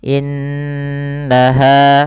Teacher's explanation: Innaha, nunnya ditahan karena ia ada bacaan gunnah ya teman-teman. Tahan gunnahnya, innaha.